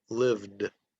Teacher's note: The final sound in the word lived. The final sound in lived ends with a d, voiced consonant d